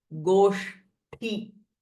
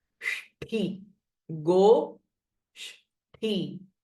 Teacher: this is a retroflex sh with a mahaprana th